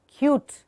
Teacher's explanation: And there should be an expulsion of the air in the end.